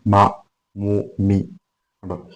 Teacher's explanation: ഈ മീമിന്റെ സ്ഥാനം എന്ന് പറയുന്നത് 2 ചുണ്ടുകളാണ്. 2 ചുണ്ടുകൾ ഇങ്ങനെ കൂട്ടിമുട്ടുമ്പോഴാണ് മീം ഉണ്ടാകുന്നത്.